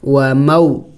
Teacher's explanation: و مو جلد پڑھیں گے، لمبا نہیں کریں گے ان کو. حروف لین کو لمبا نہیں کیا جاتا، ان کو جلد پڑھا جاتا ہے. میم و زبر مو، اور یہی حروف لین کی بڑی نشانی ہے کہ حروف لین کو جلد پڑھا جاتا ہے، ان کو لمبا نہیں کیا جاتا.